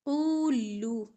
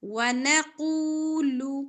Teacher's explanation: لام باریک لام کو لمبا نہیں کرنا